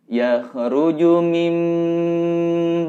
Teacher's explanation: mimbaini ini harus ditahan juga didengungkan terasa mendengung di air area hidung yakhruju mimbaini Yes ngerujuk mimbaini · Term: iqlab